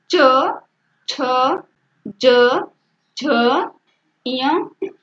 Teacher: तालव्य व्यंजन का मतलब होता है कि हमारी जिह्वा उच्चारण करते समय ऊपर के ताल को टच करके निकले तो वह हमारा तालव्य व्यंजन कहता है